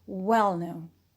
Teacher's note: known alone is an adjective when they are together well known they form an adjective as one word as one compound adjective so we stress well only